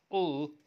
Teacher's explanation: air is released from the sides of the closure therefore the sound is called lateral ul is the only lateral